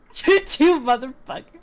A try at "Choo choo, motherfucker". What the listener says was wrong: No, you have to say it calmly.